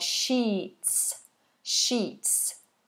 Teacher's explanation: cleaned the sheets for me now it's very important that you give this the full length of vowel we don't want a short I here because otherwise it sounds like a swear word shits shits we